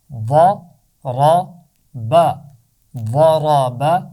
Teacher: پہلی 2 آوازیں موٹی ہیں، با کی آواز باریک ہے، ضاد اور را کی آواز کو موٹا پڑا جائے گا، ضرب۔